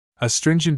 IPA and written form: əˈstrɪn.dʒənt (Astringent)